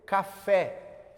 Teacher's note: Se eu tenho uma palavra como café, que o meu E ele é aberto